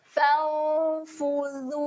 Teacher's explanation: Pastikan zal ini kita jelirkan lidah.